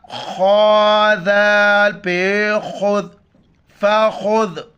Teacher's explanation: ذال کے وقت زبان باہر نکالنا ہے. ف زبر ف، خا ذال پہ خذ، فخذ.